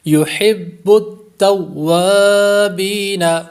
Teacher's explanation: واو پر الف مدہ ہے اور با پر یا مدہ ہے، اس لیے ان دونوں کو لمبا کریں گے